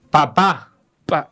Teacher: La primera P se pronuncia explotando así, papá. Pa. Y la segunda P es más suavecita.